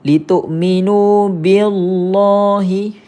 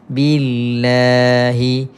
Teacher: kalau kalimah Allah sebelumnya baris bawah confirm baca nipis